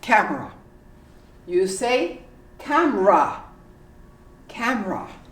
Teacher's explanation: you say camera camera completely omit the e